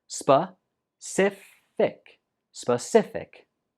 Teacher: the stress goes on the second syllable